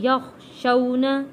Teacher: ان الذین یخشون، خا کو موٹا پڑھیں گے